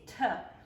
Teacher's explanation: if you were to put your hand in front of your mouth and say tough you should feel a puff of air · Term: aspiration